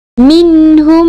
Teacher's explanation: yang bertemu dengan huruf selain huruf mim dan ba yang berbaris cara bacaan bagi izhar syafawi ialah dengan menyebut huruf mim dengan jelas tanpa dengung